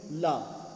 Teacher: पार्श्विक व्यंजन शायद एकमात्र ला ही होता है